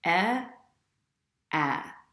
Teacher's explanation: With the A vowel, the second vowel, you should feel your jaw drop a little bit lower, your mouth open a little bit wider, and also your tongue a little bit flatter on the bottom of your mouth. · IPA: /æ/